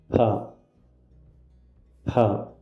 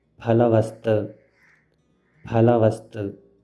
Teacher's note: This is the aspirated pa sound used to write Sanskrit words.